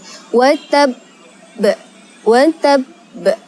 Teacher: karena pada huruf ba ada tasydid maka kita harus menekan terlebih dahulu baru di qolqolahkan atau dipantulkan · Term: Qalqalah Kubro, qalqalah kubra